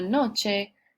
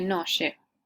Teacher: la fricativización o la lenición de la ch es el cambio de modo de articulación de aplicar el ch a una sh.